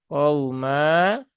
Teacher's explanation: Mimnya terbaca panjang 2 rokat ya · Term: mat iwad